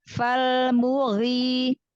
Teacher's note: Huruf ghin juga huruf isti'la. Huruf tebal ya.